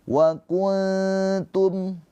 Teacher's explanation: nunnya dibaca dengan samar, ditahan 2 harokat, sambil bersiap-siap lidah kita masuk ke makhraj huruf ta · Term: ikhfa hakiki